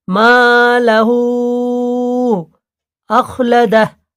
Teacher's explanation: হু চার আলিফ পরিমাণ টান হবে, এটা মাদ্দে মুনফাসিল। মালাহু আখলাদাহ, আখলাদাহু আছে, উল্টো পেশটা সাকিন হবে।